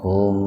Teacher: Jadi mim yang pertama dimasukkan ke mim yang kedua dengan mendengung. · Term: idgham mimi